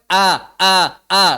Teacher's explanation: caranya dengan menutup pita suara syiddah dan tipis suaranya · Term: Hamzah